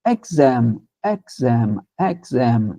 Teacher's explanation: Som do e aberto ali no início.